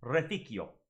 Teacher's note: you're allowed to kind of blur those two so it comes out as Reficio, because the I is making a Y sound.